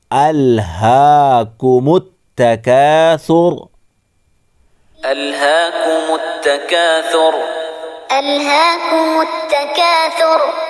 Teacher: ہا کھڑا زبر ہا، کمت کاف کے اوپر پیش، میم کو ملائیں گے تا کے ساتھ، کمت تکاثر، را رکیں گے تو را ساکن ہوگی اور را سے پہلے پیش ہے اس لیے پر پڑھیں گے، موٹا پڑھیں گے